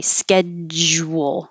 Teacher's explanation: you have to start by blocking the airflow with a j